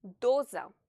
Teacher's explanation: The letter O is stressed, so you have to pronounce it louder and stretch its pronunciation.